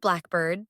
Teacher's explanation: in the word blackbird, the stress is on black. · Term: compound nouns